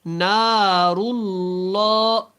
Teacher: نون الف زبر نا، اور لام پیش رل، نارل، لام کھڑا زبر لا، اللہ والا لام ہے، اس کو آپ نے موٹا پڑھنا ہے